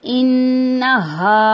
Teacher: ये नून मुशद्दद का गुन्ना करेंगे